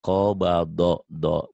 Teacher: Do-nya agak bulat ya.